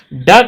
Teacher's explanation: ड का उच्चारण स्थान मूर्धन्य होता है।